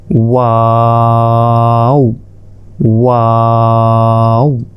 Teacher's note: এরপর ওয়াও, ওয়াওটা 4 আলিফ, ওয়াও। মুখের খালি জায়গা হতে ওয়াও উচ্চারিত হয় · মুখের খালি জায়গা হতে ওয়াও উচ্চারিত হয়, ওয়াও, ওয়াও। ঠোঁটটা গোল করবেন, গোল করে ওয়াও এইভাবে উচ্চারণ করতে হবে।